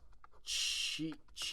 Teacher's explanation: the Q sound we actually pronounce as chi sound instead of k sound. We don't pronounce k sound, we pronounce chi sound.